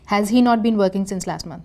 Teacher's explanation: in spoken we can simply raise our tone voice that is rising intonation to show this is a question form